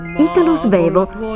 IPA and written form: ˈiːtalo ˈzvɛːvo (Italo Svevo)